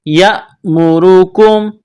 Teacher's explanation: حمزہ جب ساکن ہوتی ہے تو حمزہ پر کچھ جھٹکا سا دیا جاتا ہے